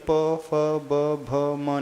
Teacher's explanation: पवर्ग के उच्चारण में हमारे दोनों होंठों का प्रयोग होता है, प पूरे दोनों टच होंगे तभी प फ ब भ म निकलेगा।